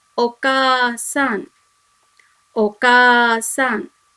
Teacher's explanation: Ka when added to A makes the long sound Ka, and it should be read together, not as Ka A.